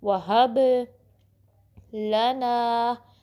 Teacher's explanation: لام کو باریک پڑھنا ہے، ٹھیک ہے. لا نہیں پڑھنا بلکہ زبان فلیٹ رہے گی، صرف زبان کی نوک یوز ہوگی. لا، نا کو 2 کاؤنٹ اسٹریچ کرنا ہے.